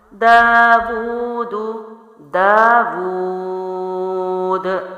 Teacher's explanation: ہم نے پڑھا ہے حروف مدہ کے بعد والا حرف ساکن ہو یا کھڑی حرکات کے بعد والا حرف ساکن ہو تو اس کو 3 الف لمبا کرتے ہیں. دال کو میں نے قلقلہ کیا ہے کیونکہ دال کی حرکت ختم ہوگی، جزم لگے گا، حروف قلقلہ میں سے ہے